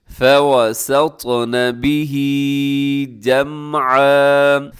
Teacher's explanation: واو پہ آپ کے ہونٹ گول ہو جائیں، اس کو آپ نے لمبا نہیں کرنا